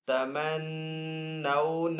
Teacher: یہاں پہ نون مشدد ہے تو یہاں پہ نون کے اوپر غنہ کر کے پڑھیں گے